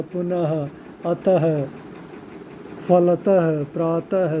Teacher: विसर्ग को बोलते समय ह की आवाज़ आती है